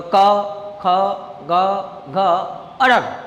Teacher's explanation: કંઠ એટલે આપણું ગળું બરાબર ગળામાંથી બોલાય છે એટલે એને કંઠવ્ય કહેવામાં આવે છે